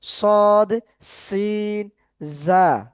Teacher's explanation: জা, হ্যাঁ এগুলো হচ্ছে কি সিটির, সিটি আওয়াজ করে অর্থাৎ একটু না আহ, একটু সিটির মতো বাজবে আর কি, আওয়াজ হবে সেরকম ভাবে পড়তে হবে